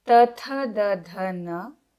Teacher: these sounds originate from the teeth region. So they are called dantyaha in Sanskritam and in English, dentals.